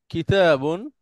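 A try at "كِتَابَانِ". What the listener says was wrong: কিতা, তাতেও টান হবে, কিতাবানি।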